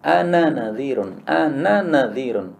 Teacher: karena tulisannya antara nun dengan nun tidak bersambung, ini tidak bisa diidghamkan. Tidak bisa an-nadhir, nggak bisa.